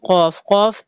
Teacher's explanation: मोटे हरूफ में से इसकी आवाज मोटी होगी रफे मुस्ता आलिया इसका मखर क्या है जबान की जड़ जबान की जो बिल्कुल एंड का हिस्सा है जड़ ऊपर जो हमारे हलक में एक गोश्त का एक टुकड़ा लटक रहा है